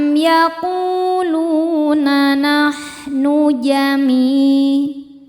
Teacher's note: Lu hukumnya mad tabi'i dhahiri karena ada waw sukun sebelumnya dhammah. Cara bacanya panjang 2 harokat.